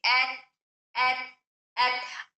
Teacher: ऐ ए तू लंबा होने नहीं देंगे बल्कि इसकी आवाज को हम रोक के रखेंगे। एत अब यहां आवाज रोकने के साथ आवाज को हम बुलंद नहीं कर रहे बल्कि हवा को निकाल रहे हैं बाहर।